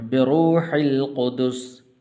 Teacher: را کے اوپر پیش ہے، پر کر کے پڑھنا